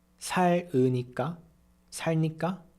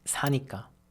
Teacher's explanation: It's 사니까. The consonant ㄹ drops.